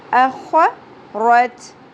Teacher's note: خا پر ہوگا خراش کے ساتھ, کھردہ حرف ہے